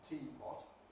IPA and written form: ˈtiː pɒt (teapot)